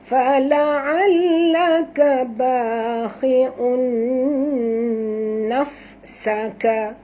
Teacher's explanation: Jangan baca hi, baca khi. Khi'un, dengung tanwin bertemu dengan nun, idgham ma'al gunah, dengung dua harakat